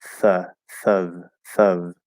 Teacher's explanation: It's like the, but voiceless. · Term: voiceless TH